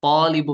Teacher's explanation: الف سے پہلے طا پر حرف ہے تو الف بھی یہاں پہ پر ہو جائے گا۔